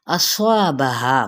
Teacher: صاد بھی پر ہے تو الف بھی پر ہو جائے گا